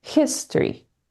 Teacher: the stress of the word falls on the first syllable